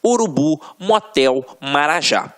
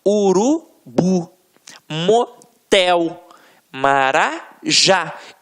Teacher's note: É quando a sílaba tônica está na última sílaba. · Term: oxítonas